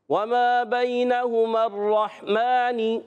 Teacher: میم پر کھڑا زبر ایک الف کھینچ کر ادا کریں گے، نون کے نیچے زیر ہے، اس کو نہیں کھینچنا۔